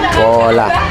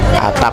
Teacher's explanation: Fonem P itu memiliki 2 penuturan. Yang pertama terbuka atau terlepas, yang kedua tertutup atau tidak terucap.